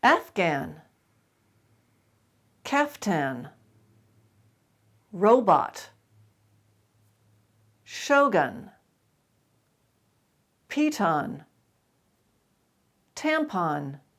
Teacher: in these words you actually do pronounce that second syllable even though it's not accented